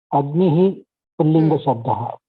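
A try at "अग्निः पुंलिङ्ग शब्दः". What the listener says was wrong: Excellent.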